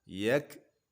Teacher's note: Huruf kaf ada sifat hamas yang harus ditampakkan. Yak tidak boleh yak, tapi ada hamas atau angin yang mengalir.